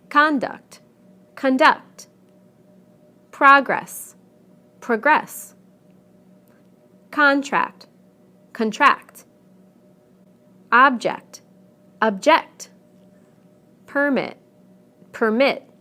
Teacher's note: We stress the first syllable in the nouns and the second syllable in the verbs. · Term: word stress